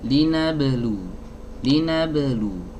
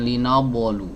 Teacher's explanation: Ya, sudah memantul tapi pantulannya kurang tepat. Jadi pantulannya itu tidak boleh diiringi dengan hamzah. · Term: qalqalah